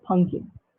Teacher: p gets deleted the middle p and becomes pumpkin